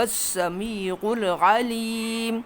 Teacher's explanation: عین یہاں بھی وسط حلق سے اور یہاں بھی وسط حلق سے